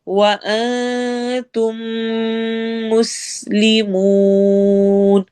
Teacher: تم میں میم کے ساتھ ہم میم کو ملائیں گے، یہاں پر ادغام شفوی ہو رہا ہے